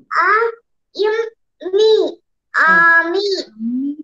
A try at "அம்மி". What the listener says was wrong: ஆ வாசிக்கிறீங்க ஆ தானே வாசிக்கிறீங்க ஆ நம்ம உச்சரிக்கல இல்ல ஆ இம் மீ அம்மி